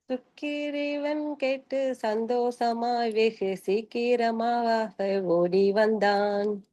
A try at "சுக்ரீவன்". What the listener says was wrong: சுக்கிரீவன் சொல்ல வேணாம், சுக்ரீவன் கேட்டு சந்தோஷமாய் வெகு.